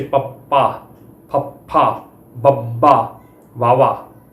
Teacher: ਤੇ ਹੋਂਠੀ ਧੁਨੀਆਂ ਦੇ ਵਿੱਚ ਪੱਪਾ, ਫੱਫਾ, ਬੱਬਾ, ਵਾਵਾ ਜਦੋਂ ਸਾਡੇ ਬੁੱਲ ਜੁੜਦੇ ਨੇ ਜਿਹੜੀ ਧੁਨੀ ਨੂੰ ਉਚਾਰਨ ਵੇਲੇ, ਤਾਂ ਉਹਨਾਂ ਨੂੰ ਹੋਂਠੀ ਧੁਨੀਆਂ ਕਿਹਾ ਜਾਂਦਾ ਆ। ਇਹਨਾਂ ਦੇ ਉਚਾਰਨ ਸਮੇਂ ਸਾਹ ਦੀ ਹਵਾ ਨੂੰ ਬੁੱਲਾਂ ਦੁਆਰਾ ਰੋਕ ਕੇ ਛੱਡਿਆ ਜਾਂਦਾ ਆ।